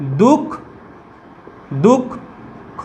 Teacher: তাহলে দেখো যে বর্ণটার আগে আছে অর্থাৎ খ এর আগে আছে, খটা দেখো দুবার উচ্চারিত হচ্ছে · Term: ব্যঞ্জনের দ্বিত্ব